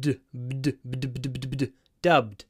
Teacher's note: With dubbed, the challenge is to pronounce bd to make them both voiced.